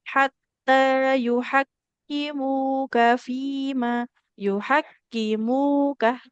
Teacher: Karena mimnya domah ketemu waw harus panjang.